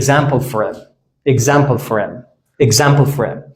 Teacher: h را حذف میکنیم، r را با I وصل میکنیم